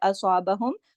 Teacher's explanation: صاد کو موٹا پڑھیں گے، صاد کی اصابہم، کیونکہ یہ موٹے حرف میں سے ہے.